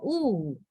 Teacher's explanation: O is a back vowel it's inside the back Circle right it's a back vowel and high vowel lips round vowel and mouth close